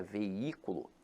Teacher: Agora, a palavra veículo, apesar de ter hiato, veja que a sílaba tônica se encontra na antepenúltima sílaba. Então aqui ela é acentuada pela regra da proparoxítona.